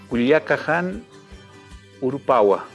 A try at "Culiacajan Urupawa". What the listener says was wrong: Muy bien.